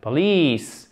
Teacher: Accent tonique sur la deuxième syllabe.